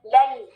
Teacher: लाम फतहा ल और फिर या की तरफ आए